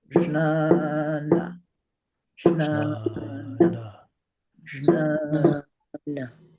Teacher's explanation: the first a is long so it gets two beats one is short gets one beat so it has three beats